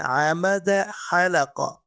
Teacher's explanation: عمد اور حلق، اب عمد کے اندر عین اور حلق کے اندر حا، یہ دونوں جو ہیں ہمارے پاس مڈل آف دا تھروٹ سے ادا ہوتے ہیں